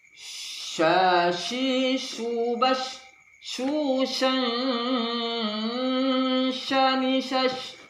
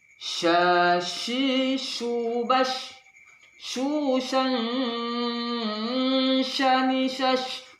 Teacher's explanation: Suara agak menyebar, suara angin menyebar dengan kuat. Sya, mulut dimonyongkan, seperti kita ada ikan yang memonyongkan mulutnya, ikan mujair itu memonyongkan mulutnya ketika dia makan. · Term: huruf sya